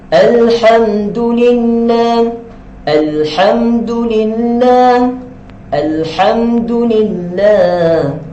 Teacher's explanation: Maka bila kita jumpa tanda sukun di atas lam, maka kita kenal dia adalah alif lam qamariyah. Kita kena baca dengan jelas lam itu, dengan jelas dan lembut lam itu.